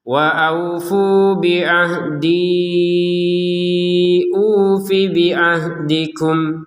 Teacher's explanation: Waaufu panjang dua harakat. Yang ufi tidak panjang karena langsung di sini tidak ada ya. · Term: panjang 2 harokat